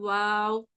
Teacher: ऐसे अदा करते हैं कि दोनों होठ एक दूसरे के करीब होते हैं, लेकिन वो आपस में मिलेंगे नहीं, ज्वाइन नहीं होंगे